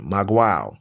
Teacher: Maguao, that's spelled M-A-G-U-A, Maguao, with the stress on the last syllable